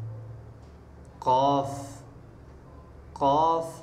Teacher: ज़बान की जड़ और तालु के नरम हिस्से से काफ अदा होता है